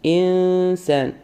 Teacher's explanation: നമ്മുടെ നൂനിന്റെ ശബ്ദത്തിനെ ഹൈഡ് ചെയ്തുകൊണ്ട് മറച്ചുപിടിച്ചുകൊണ്ട് പറയാം അതാണ് ഇഹ്ഫ നൂന് സീനിലേക്ക് നമ്മൾ ലയിപ്പിക്കുകയും ചെയ്യണം എന്നാൽ പകുതിയായിട്ട് മറച്ചു പിടിക്കുകയും